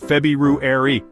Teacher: you would be surprised how many people just casually skip right over that first R don't be that person embrace the r own it say it